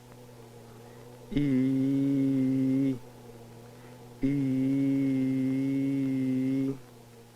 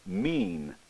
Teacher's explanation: by the effects of adjacent nasal consonants on vowel sounds during the vowel e the velopharyngeal port would generally be closed